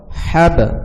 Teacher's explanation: যদি আপনারা হাব বলেন তাইলে এইটা প্রপার উচ্চারণ হবে না। যেহেতু বায়ে জজম রয়েছে এবং বা কলকলার হরফ, সেহেতু বাটি কলকলা করিয়া পড়তে হবে।